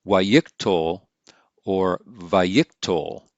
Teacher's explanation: is written like this and we pronounce that waikikto or vayiktol notice that the accent is pulled back to the pre-tonic syllable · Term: wow consecutive imperfect